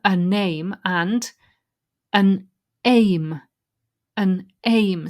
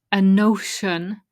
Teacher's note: the N from the final letter of the first word joins to the next word if it's a vowel. So a name, a notion sounds like a name or an ocean.